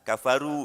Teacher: Dhammah akan sempurna dimonyongkan bibirnya.